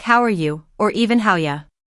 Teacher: In a textbook or a classroom, people might say it slowly and clearly, but in real life, it sounds more like how are you or even how you. The words link together and the less important word are becomes very soft, almost disappearing.